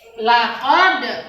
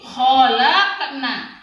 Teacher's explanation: Itu dia memantul. Kan dia qalqalah sugro, memantul tapi tidak keras.